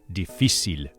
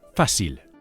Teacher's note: in Latin American countries, the soft C is always pronounced [music] as an S